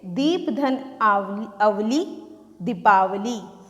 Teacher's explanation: जैसे अ और अ दोनों ही ह्रस्व स्वर हैं, लेकिन दोनों के मेल से हमें क्या मिला? आ, दीर्घ स्वर। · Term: दीर्घ संधि